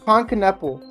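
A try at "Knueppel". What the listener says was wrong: It's not Kneppel. Think of it as two syllables. Ka. Ka. Nipple. So not ka areola, but ka nipple.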